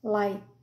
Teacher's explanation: Ele é um T que a gente faz o movimento da boca para pronunciar ele, mas o ar não sai. Light. Então, light é uma sílaba só.